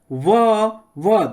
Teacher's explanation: व दंत और ओट से